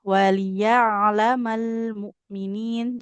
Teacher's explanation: Jadi lamnya itu enggak boleh terburu-buru. Harus mengalir dulu suara di huruf lam sukunnya